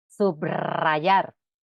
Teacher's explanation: la r representa en estos casos el fonema vibrante r